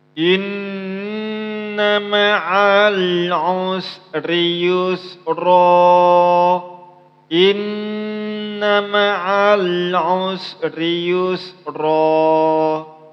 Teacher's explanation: Usahakan innya itu dilamakan karena hukumnya ialah ghunnah atau wajibul ghunnah atau ghunnah musyaddadah. Maka dilamakan 2 sampai 3 harakat. · usahakan cara baca ain itu ialah dimasukkan ke dalam tenggorokan. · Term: huruf ain